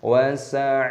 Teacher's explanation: Wa aghlalau, fathah tanwin bertemu dengan wawu, hukumnya dibaca idgham bi gunna, dimasukkan dan disertai berdengung. Wa sa'ira, ainnya dibaca panjang, ada ya sukunya, panjangkan 2 ketukan, dan roknya di sini dibaca panjang mata iwad.